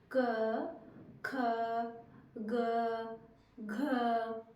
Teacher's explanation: इनको बोलते हैं कंठ कहां से निकल रहे है हमारे कंठ से